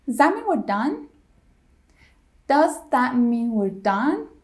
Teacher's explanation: when does and that are together we drop the first two sounds of does and the first sound of that so we're left with Z that me we're done that me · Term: dropping sounds